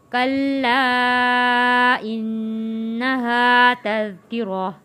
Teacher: حروف مدہ ہے ہا، اس لیے ہم نے 1 الف کے برابر کھینچ کر پڑھا ہے